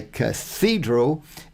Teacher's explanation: But the reason I get tied up on it, fall over on it, is because we say cathedral, and so the emphasis is on that second syllable